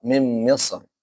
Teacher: Mimisr seharusnya apa? Tipis. Kenapa? Karena ro sukun sebelumnya kasrah.